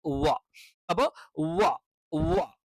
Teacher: താഴെ ചുണ്ടിൽ തട്ടിക്കൊണ്ടുള്ള വ എന്നുള്ള ഉച്ചാരണം തെറ്റാണ് അതല്ല വ എന്ന് പറയുന്നത് രണ്ട് ചുണ്ടുകളും വൃത്താകൃതിയിൽ വെച്ചിട്ട് രണ്ടു ചുണ്ടുകൾക്കിടയിൽ നിന്ന് രൂപപ്പെടുന്ന ഒരു അക്ഷരമാണ് വ